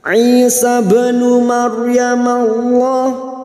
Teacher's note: ra sukun yang didahului fathah, kita baca tafkim atau tebal